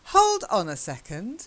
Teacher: just stressing different words the hold and second